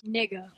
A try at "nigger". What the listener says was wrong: No, not with the A, the E-R.